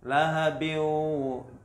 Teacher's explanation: masuk ke huruf setelahnya, ke huruf waw, tapi dengan dengung. Lahabiu, tidak dibaca lahabin watab, tapi lahabiu itu langsung masuk huruf waw. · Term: idgham bi gunnah